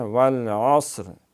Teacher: والعصر عین جو ہے گلے سے جو اس کا مخرج ہے حلق، وہاں سے اس کو ادا کریں گے